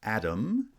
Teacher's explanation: atom has stress on the first syllable